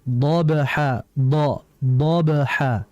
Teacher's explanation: huruf dad ini merupakan huruf yang keluar dari lidah bagian samping